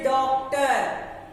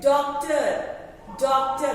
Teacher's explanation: अर्धचंद्राकार उच्चारण करते समय होठ गोल हो जाता है, जैसे डॉक्टर, डॉक्टर का उच्चारण करिए, आपको अपने आप पता चलेगा कि किस प्रकार से हमारा होठ जो है वो गोल हो रहा है।